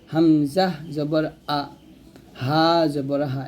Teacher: এই ছয়টা হরফ কি করতে হয় হলক থেকে উচ্চারণ করতে হয় হামজা হা হলকের শুরু থেকে উচ্চারণ করব